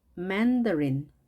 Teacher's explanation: 강세가 앞에 있습니다. 따라서 이렇게 앞이 소리가 올라가겠습니다.